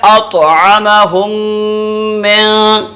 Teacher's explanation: ایک الف کے برابر ٹھہر کے کرتے ہیں۔ تو میم کو میم میں ملا کر ایک الف کے برابر رکیں گے۔ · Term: غنہ